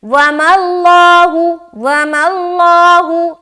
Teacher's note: आगे वमल्लाहु, वाव ज़बर वा, मीम लाम ज़बर मल, वमल, लाम खड़ा ज़बर ला, हा पेश हु, वमल्लाहु। लफ्ज़ अल्लाह का लाम मोटा, क्यों मोटा? क्योंकि लफ्ज़ अल्लाह के लाम से पहले क्या है? ज़बर है।